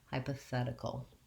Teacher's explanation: And I'm going to write that T as the letter D because this is a flap T here, which means that Americans are going to pronounce that without using the T sound, but rather like a light D sound.